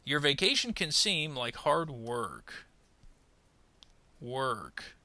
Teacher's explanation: Notice we're going to rise and then fall at the period.